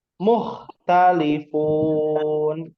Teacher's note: Huruf kha itu kita pelajari pada halq ya, tenggorokan bagian atas ya. Nah, jadi dibacanya itu bukan qalqalah ya.